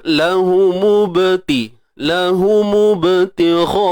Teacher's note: jadi kita jelas bahawa adanya sifat lantunan di sini, cuma ianya berlaku dengan keadaan yang kecil saja. Itulah namanya qalqalah sughra, kecil, ataupun kita kata lemah.